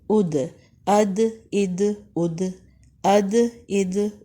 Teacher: یہاں پر ساکن کی صورت میں قلقلہ ہو رہا ہے، یعنی مخرج کے 2 حصے ملا کر چھوڑ دینے ہیں۔